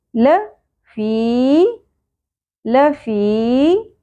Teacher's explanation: یا ساکن حرف مدہ ایک الف کے برابر کھینچنا ہے